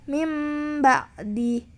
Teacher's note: menyuarakan huruf nun atau tanwin menjadi suara mim dengan merapatkan dua bibir serta mendengung